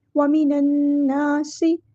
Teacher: نون پہ ہم غنہ زمانی کریں گے، ایک الف کے برابر رکیں گے. وَمِنَ النَّاسِ، نا کو ہم لمبا کریں گے، مد اصلی ہو رہی ہے، ایک الف کے برابر ہم لمبا کریں گے.